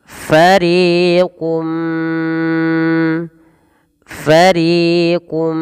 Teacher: tanwinnya masuk kepada huruf Mim dan diganti bunyi suara mim · ditahan suara mnya sepanjang dua harakat karena disertai dengan gunah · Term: Idgham bhunah